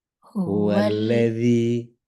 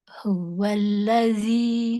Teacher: Jadi gigi atas itu ketemu sama lidah dan ditahan.